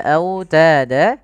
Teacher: Kemudian autada, pada lafal autada lafal wawnya lembutkan karena dia bacaan lin, sambil dimonyongkan sedikit bibir kita ke depan